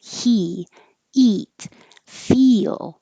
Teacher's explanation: e as in he is the same as eat very high your tongue should be very high and very tense